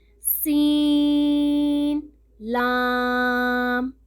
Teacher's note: سین کی مقدار بھی 3 الف کے برابر اور لام کی بھی، اس لیے ہم نے دونوں کو ایک جیسا دراز کر کے پڑھنا ہے